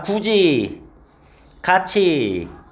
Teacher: 그 다음에 이제 구개음화. 구개음화는 이제 디귿, 티귿이 이모음이나 반모음이를 만나면 각각 지읒, 치읒으로 바뀌어서 지치로 발음되는 현상이야.